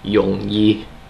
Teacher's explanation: He kept on pronounced it Yongyi, and that actually doesn't mean anything that I'm aware of in Cantonese. It's actually mid to low. It's a low tone falling.